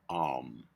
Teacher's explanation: the lips open, followed by the lips closed, with a continuous exhale, vibrating our vocal cords